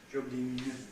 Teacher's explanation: A French O, which is a bit sort of centralized compared with English. Jogging. And a vowel that's too tense.